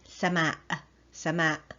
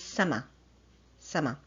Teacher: In classical Arabic, generally, sky is sama' with a glottal stop at the end. But here I've chosen another word for you, which is sama, and it ends with a vowel sound.